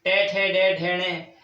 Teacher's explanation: उच्चारण स्थान मूर्धा से होता है तो मूर्धन्य बोलते हैं